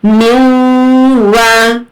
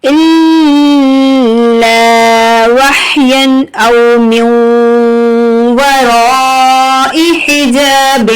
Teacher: یہاں پر ادغام مع غنہ ہو رہا ہے، جیسے ہی نون ساکنہ تنوین کے بعد یہ حروف یرملون آ جائیں تو ادغام مع غنہ ہوتا ہے، تو ہم نون کو ڈراپ کریں گے، میم کو واو سے ملا کر پڑھیں گے، میو، واو زبر وا، میو وا، رو، الف مد زبر رو، میو ورا۔